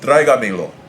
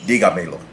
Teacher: you're going to notice that the stress is on that fourth to last syllable. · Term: sobre esdrújulas